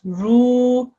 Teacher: because there was a waw sakin making this a mother combination, I then joined the ru and extended it.